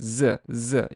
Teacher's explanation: voiced is basically your voice box vibrates when you produce the sound, and sibilant is basically produced with the teeth touching. You have to have your front teeth touching each other to produce that sound. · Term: voiced sibilant